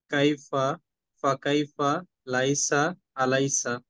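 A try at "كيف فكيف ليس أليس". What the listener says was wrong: Good.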